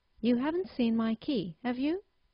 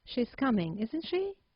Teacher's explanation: We can now move on to usage. As I said, the first usage of a question tag is to formulate a simple yes-no question, but in this case you have to use a rising intonation